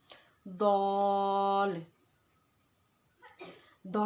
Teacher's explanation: दाल का मखरज क्या है, ज़बान की नोक और स्नाया उलिया की जड़ें, यानी कि ऊपर के सामने के 2 दांतों की जड़ों से दाल अदा होगा।